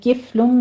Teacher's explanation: किफ़्लुम मिन्हा में फा पर हमस होगा